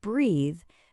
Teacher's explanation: In a verb like breathe, the th is voiced. Your throat is buzzing.